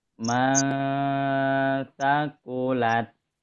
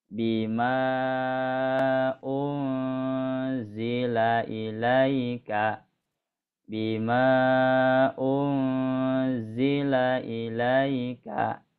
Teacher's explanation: maka dibacanya sama didengungkan, terus kadar dengungnya disamakan kayak yang nun dan mim bertasdid